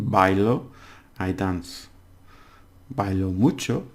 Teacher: So for example, bailo, the stress is on the first one.